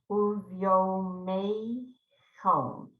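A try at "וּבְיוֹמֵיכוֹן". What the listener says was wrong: The end of the word is a little off. Chon.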